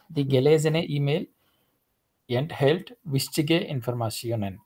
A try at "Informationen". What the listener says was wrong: yeah, for some reason I hear sure. So you are saying informationen. I mean, it's not sure. It's sir, just like normal sir. Informationen, like sir, like So for example, sun. What you are saying is you are saying sunshine. You are saying sure, the shine of sure, sun.